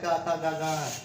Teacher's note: कवर्ग जो होता है का खा गा गा, तो ये बोले जाते हैं आपके कंठ से